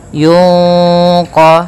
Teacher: q yang mana q termasuk daripada bacaan Ikhfa cara membacanya yaitu suara nunnya disamarkan kepada huruf q